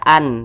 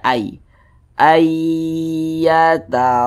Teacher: cara membacanya dengan cara memasukkan kemudian disertai dengan ghunah gunah itu dengungan disertai dengan dengungan · Maka nun sukun berjumpa dengan huruf ya, hukumnya adalah idgham bi gunnah. Cara membacanya dengan cara memasukkan kemudian disertai dengan gunnah. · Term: idgham bighhunah